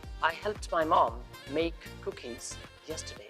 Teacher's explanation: In this example, the end of the word help sounds like p, so the ed ending is pronounced t.